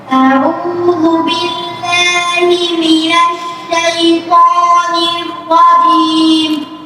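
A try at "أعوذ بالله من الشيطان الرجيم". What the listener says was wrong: একটু ঢেউ থাকবে, তরঙ্গ থাকবে, ওঠানামা, একদম নিশ্চল, হ্যাঁ, স্থির না, একটু ওঠানামা হবে। আউযু বিল্লাহি মিনাশ শাইতানির রাজীম। الشيطان الرجيم رجيم رجيم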